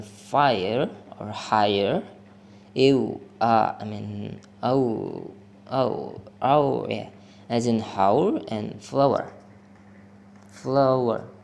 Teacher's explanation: a sequence of three vowel sounds that are pronounced as a single unit